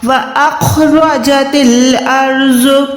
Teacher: الف جو ہے یہاں پر حمزہ اس کو کہیں گے، الف تب ہوتا ہے جب وہ خالی ہوتا ہے، جب بھی الف پہ کوئی حرکت یا نشانی آ جاتی ہے تو وہ حمزہ کہلاتا ہے۔ تو یہاں پر حمزہ جو ہے سینے والے حصے سے یعنی حلق کے نیچے والے حصے سے ادا ہوگا